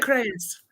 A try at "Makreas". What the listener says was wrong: Close. Makreas, yeah. You gave me an extra syllable. Makreas.